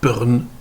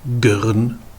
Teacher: Eh bien en saintonge, on va intercaler une voyelle entre la consonne et le R, et on va comme ça renverser un petit peu la prononciation